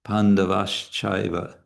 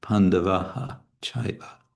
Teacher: Pandavaha becomes Pandavash because there's a cha after it, and it's easier to pronounce Pandavash Chaiva than it is to pronounce Pandavaha Chaiva.